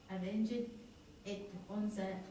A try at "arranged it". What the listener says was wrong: Arranged. Yeah, you've got to get a bit of linkage there too. Arranged it. Arranged it. It helps to say the dit if you link it. Arranged it.